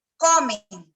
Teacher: en un lugar de una consonante nasal final es frecuente que haya solo nasalización de la vocal presente